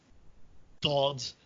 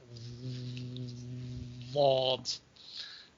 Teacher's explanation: it's a lateral fricative. That is, the sound escapes past the sides of your tongue with a kind of friction, rather than that you completely close off the sound. So you can also keep it on longer.